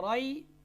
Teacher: اسے کہتے ہیں یائی مدہ، یہ منہ کے خالی حصے سے ادا ہوتی ہے۔ اس میں ایک الف کی مقدار کیا ہے، مد ہوتی ہے، یعنی لمبا کرنا ہے اس کو۔